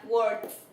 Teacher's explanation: cuando la palabra termina en un sonido débil, se dice que se pronuncia la ed como una T. Esto se pronuncia como una T.